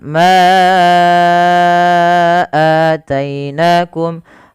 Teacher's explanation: Pada lafal ma ini ada bacaan mad jaiz munfasil. Bacaan ma wajib kita panjangkan empat harakat atau lima harakat dalam riwayat Imam Syatibi atau Imam Hafiz Anasim dari jalurnya Imam Syatibi.